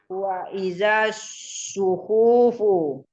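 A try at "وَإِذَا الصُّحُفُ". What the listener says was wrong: Wa iza suhufu. Pendek.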